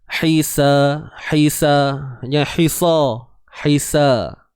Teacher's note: Ri, huruf ra baris bawah ri, nipis saja. Ri, huruf ha pedas, tengah kerongkong kita sempit